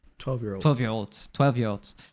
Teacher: she's really connecting them all together that it almost sounds like a person's name or something